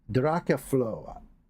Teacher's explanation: The final O is silent, not the English f [laughter] sound. The stress falls mainly on the first syllable.